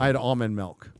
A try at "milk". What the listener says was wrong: Why do you say milk like it's spelled with an E? Milk. You say milk with an E. Instead of milk. Milk with an I.